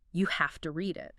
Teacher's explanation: It notes that the speaker emphasizes have to. Like you really have to read it, showing strong recommendation.